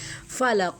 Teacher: فا کو جب ہم پروناؤنس کریں گے تو اوپر والے جو دو دانت ہیں نا اس کو ہم، نیچے والا جو لپ ہے نا اس کے اندر والے حصے کو ہم ٹچ کریں گے۔